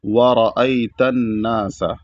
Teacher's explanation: را پر زبر ہے تو اس کو موٹا پڑھا جائے گا